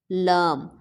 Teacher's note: تو ہماری زبان ثنایا علیا کے پیچھے سخت تالو کو ٹچ کرتی ہے